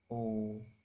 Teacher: Huruf O ini cara pelafalannya yaitu menarik lidah ke belakang. O, lidah kita akan tertarik ke belakang, disertai dengan hembusan nafas dan mulut dibundarkan. O, mulut kita akan membundar.